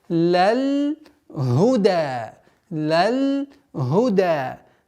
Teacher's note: Нужно избегать правила калькаля в лям, так как его нету. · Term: без правила калькаля